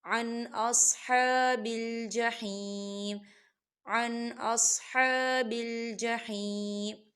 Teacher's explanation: دیکھیں یہاں نون ساکن ہے، نون ساکن کے بعد حمزہ آ رہا ہے. حمزہ حروف حلقی کا ورڈ ہے، تو ہم اسے جلدی سے پڑھیں گے. یہاں غنہ نہیں کریں گے